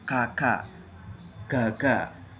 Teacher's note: belakang lidah dinaikkan dan menempel pada velum atau langit-langit lunak di bagian belakang mulut